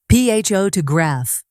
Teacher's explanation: Another example, the word photograph. The stress is on the first syllable, photograph.